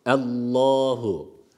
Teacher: Evet lafzatullah'ın hükmü burada kalın okunması gerekiyor Zira Evet Elif var burada Elif harfi geçiş yapıyoruz vasıl yaptığımız